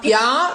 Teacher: the accent falls on the A, so you will sing the A